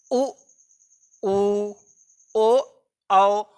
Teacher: उ, ऊ, ओ, औ में आपका ओठ जो है गोल हो जाता है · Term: वृत्ताकार